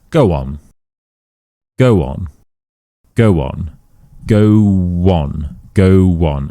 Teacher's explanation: W. We add this W to help us bridge these two words together. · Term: W rule